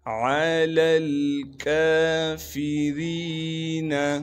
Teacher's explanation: عین کو صاف کر کے گلے سے نکالیں گے، عین کے بعد لام ہے، اس لام کو دوسرے لام سے ملا دیں گے کیونکہ دوسرا لام ساکن ہے۔ ان دونوں لاموں کے درمیان یا بھی موجود ہے، الف بھی ہے، ان دونوں حرفوں کو ہم نہیں پڑھیں گے۔ · کاف کو باریک کر کے پڑھیں گے، کاف پر کڑا زبر ہونے کی وجہ سے کاف کو ایک الف کے مقدار کھینچیں گے۔ کاف کے بعد فا ہے، فا کو بھی بغیر کھینچے پڑھنا ہے، را کو باریک کر کے پڑھیں گے، اور را کے بعد یا مدہ ہونے کی وجہ سے را کو ایک الف کے مقدار کھینچیں گے۔